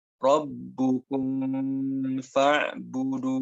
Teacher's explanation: Nah, itu cara pengucapan yang salah ya. Ketika mimnya tidak ditutup rapat, tapi malah terkesan mengikuti huruf setelahnya, ini dikasih warning oleh para ulama agar tidak dibaca ikhfa.